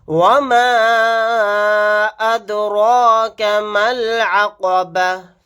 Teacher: وَمَا أَدْرَاكَ مَا الْعَقَبَةُ، یہاں پر مد منفصل کا قاعدہ ہوگا، اس مد کو ہم 3 الف کی مقدار کھینچ کر پڑھیں گے، دال ساکن ہے، یہاں پر قلقلہ کر کے پڑھیں گے۔ میم کو ڈائریکٹ لام کے ساتھ ملا دیں گے، یہ دونوں الف نہیں پڑھے جائیں گے۔ یہاں پر آیت کرنے کی صورت میں تا کو ہا ساکن بنا کر پڑھیں گے۔